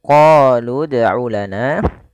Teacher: kita memanjangkan huruf qo sepanjang dua harakat karena pada lafal qo ini ada bacaan Mad thi'i kita lihat